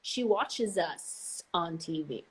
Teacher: very clear z sound especially when you have a vowel right after